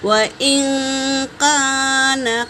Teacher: وَإِن كَانَ قَمِيصُهُ قُدَّ مِن دُبُرٍ، واو پہ حرکت ہے، حمزہ بھی حرکت ہے، نون پر سکون ہے، نون ساکن کے بعد کاف آیا ہے تو یہاں پر نون کا اخفا ہوگا